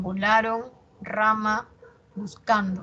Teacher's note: El acento en la penúltima sílaba. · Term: grave